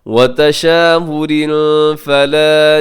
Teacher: تشاور پہ تنوین ہے اور تنوین کے بعد فا, یہاں پہ کیا کریں گے, اخفا